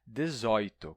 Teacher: em Portugal, o tradicional é dizer dezoito, com O aberto, porque é a contração de um A com um O, e o A é aberto, né?